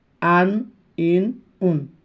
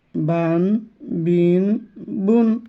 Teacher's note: প্রত্যেকটার শেষে দন্তের ন যোগ করব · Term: তানবিন